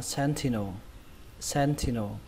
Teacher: Sentinel. Trọng âm của nó rơi vào âm đầu tiên, âm sen.